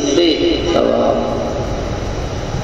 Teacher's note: اب ثواب کے ادا کرنے میں پروناؤنسیشن میں سیٹی نہیں نکلنی چاہیے، سی کی آواز نہیں آنی چاہیے، سے ثواب، یہ ہوتا ہے فرق۔